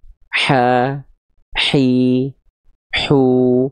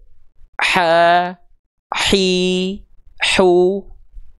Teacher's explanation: Ketika kita melafalkan H kecil, dia akan menyempit. Dia akan menyempit ke dinding tenggorokan.